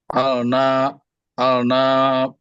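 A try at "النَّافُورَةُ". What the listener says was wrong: Tadi Al-Nafuroh, sekarang jadi An-Nafuroh.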